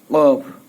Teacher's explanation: বলতে হবে গইন খ বললেই মোটামুটি হয়ে যাবে চার নাম্বার মাখরাজ জিহ্ববার গোড়া তার বরাবর উপরের তালুর সঙ্গে লাগাইয়া